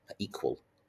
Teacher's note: There's a shorter E sound to start with, and then a hard K, equal.